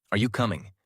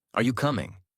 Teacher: Voice rises at the end. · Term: Natural tone